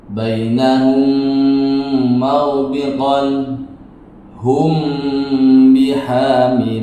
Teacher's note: Ini dibaca dengan bunyi sengau. Mim sukun yang berhadapan dengan huruf mim atau ba harus dibaca dengan bunyi sengau. Maka dibacalah bainahum, magbiqon, hum bihamilin.